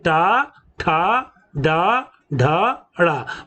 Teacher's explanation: तालव्य और हमारे दांत जहां से निकलते हैं उसके बीच की स्थिति को मूर्धा कहते हैं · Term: मूर्धन्य ध्वनि